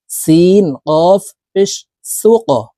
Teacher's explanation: এখানে কলকলার হরফ কফ আসছে এই কারণে উপরের দিকে ধাবিত করে ধাক্কা দিয়ে উচ্চারণ করব